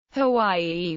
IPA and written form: həˈwaɪʲi (Hawaii)